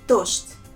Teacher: this sound Z. In this word, I pronounce as sh. And D, I pronounce it as t.